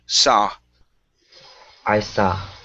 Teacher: Instead of saw with an oo, it's an ah sound.